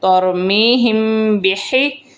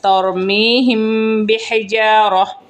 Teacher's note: میم ساکن کے بعد اگر با آ جائے تو وہاں غنہ کرتے ہیں، اسے اخفاء شفوی کہتے ہیں۔